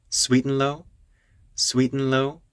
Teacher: she's going up at the end of that phrase because it's a request